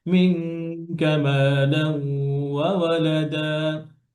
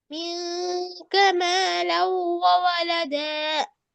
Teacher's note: নুনটা যেন, কাফটা যেন লেগে যায় গুণনা করার সময়, কাফের মাখরাজ থেকে